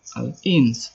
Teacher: Karena ada huruf nun mati atau sukun bertemu dengan huruf sin. Cara membacanya samar-samar di bibir, membentuk huruf sin dan mendengung. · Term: ikhfa hakiki